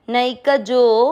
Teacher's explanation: नई का जो के बाद में है अवग्रह, आपको जो की मात्रा को लंबा खींचना है